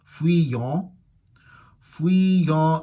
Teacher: The second vowel is nasal.